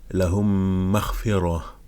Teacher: Et lorsqu'on a l'idram shafawi, donc on fait la fusion entre les deux mimes